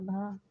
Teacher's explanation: हिंदी की स्पर्श घोष महाप्राण ओष्ठ व्यंजन ध्वनि